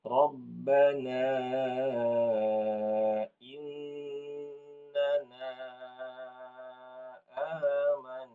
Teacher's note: nunnya ada tasdidnya ditahan dulu